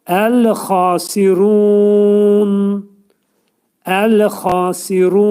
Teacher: Nunun üstünə sükun gələcək və nunun səsi axırda eşidilməlidir.